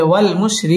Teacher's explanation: ওয়াও ঠোঁট গোল করে উচ্চারণ করতে হবে